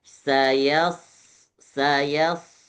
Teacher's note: Jadi yanya enggak boleh jadi tebal.